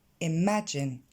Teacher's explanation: L'accent tonique tombe sur la deuxième syllabe, imagine.